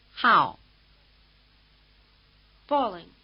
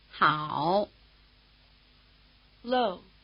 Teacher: the falling tone is the shortest tone and the low tone is the longest